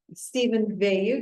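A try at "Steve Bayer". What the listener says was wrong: Bayer, close. I don't have an N at the end of my name, so it's Steve.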